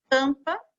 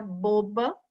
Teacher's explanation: Durante a leitura em voz alta, observe que ao pronunciar as letras em destaque, né, que são as letras M e N, o som sai um pouquinho pela boca e um pouquinho pelo nariz. Esse som é chamado de som nasal